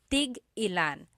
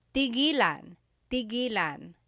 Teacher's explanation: So tig-ilan, when there's a hyphen in it, you have to have that glottal stop.